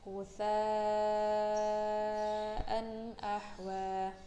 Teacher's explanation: ada fathah bertemu dengan alif lalu diikuti oleh hamzah dalam satu kata, maka itu termasuk mad wajib mutasil, dibacanya 2,5